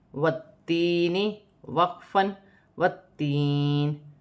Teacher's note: وقف کی صورت میں زیر گر جائے گی اور نون ساکن ہو جائے گی، یا ساکن سے پہلے زیر ہے تو یا مدہ بن رہی ہے، اسے ایک الف کی مقدار کھینچ کر بھی پڑھا جائے گا۔ تا مشدد ہے، جماؤں کے ساتھ پڑھا جائے گا، 2 مرتبہ پڑھا جائے گا، والتین۔